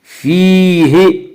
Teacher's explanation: فیہ، یا مدہ وہ یا جو ساکن ہو اس سے پہلے زیر ہو، یا مدہ کو 1 الف کی مقدار کھینچ کر پڑھتے ہیں